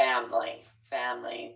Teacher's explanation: a lot of people drop that third syllable and they'll say family.